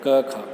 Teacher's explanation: क ख कहाँ से आ रही है, गले से, जीवा के मूल से, इन दोनों का उच्चारण स्थान क्या होगा, जीवामूलम।